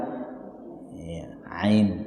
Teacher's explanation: Ain, ini juga keluar dari tengah tenggorokan. Ain, ya.